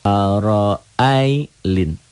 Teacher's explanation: A-nya kosar, ro-nya tebal tabkhim.